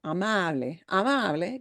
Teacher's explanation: the second to the last syllable, which happens to be that ah sound, amable, amable, gets the stress. And the way we pronounce that word obeys that general rule, amable.